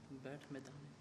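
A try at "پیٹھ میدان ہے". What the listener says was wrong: क्या ही बैठ नहीं पीच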